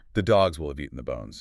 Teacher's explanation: The H in have disappeared completely. The vowels turned into that tiny, weak sound we call the schwa